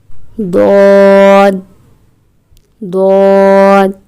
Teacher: زبان کا بغلی کنارہ جو حلق کی طرف ہے، اس کے دائیں بائیں اوپر کی داڑوں کی جڑیں یہ ضاد کا مخرج ہے، یعنی کہ زبان کی جو کروٹ ہے جب وہ بائیں دائیں اوپر کی داڑوں سے لگے تو اس حرف یعنی کہ ضاد کا مخرج ہوتا ہے، ضاد ادا ہوتا ہے۔